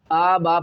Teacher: 5 الف کی مقدار سے کھینچ کر پڑھے